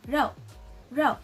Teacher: it also has the fourth tone. So we're gonna sound like we're exclaiming. So it's gonna sound like rou, rou.